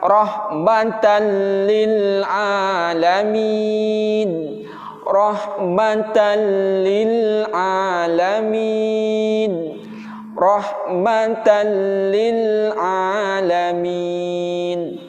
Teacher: memasukkan bunyi tanwin kepada lam, kemudian tidak disertai dengan dengung. Ingat, tidak disertai dengan dengung. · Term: idgham bila gunnah